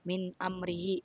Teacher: Pada kata ini nun sukun diikuti oleh huruf alif, maka nun dibaca jelas tanpa suara nasal. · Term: izar